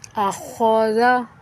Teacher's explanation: خا ادھر پر حروف ہے، اس کو موٹا پڑھنا، خا کو اس کے صحیح مخرج سے ادا کرنا ہے۔ آخاذا موٹا کر کے پر کر کے پڑھنا ہے، اور حلق کے درمیانی حصے سے خا ادا ہوگا، اور ذال کو نرمی سے پڑھنا ہے۔